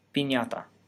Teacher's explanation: the first vowel should be tense and the final consonant should be playing t not a flap · So, if you want to pronounce the word piñata in Spanish, you need to make 3 changes. The first consonant should be a plain P, the first vowel should be tense, and the final consonant should be a plain T, not a flap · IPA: [piɲata]